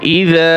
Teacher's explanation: ইযা নরম হবে এবং এক আলিফ টান হবে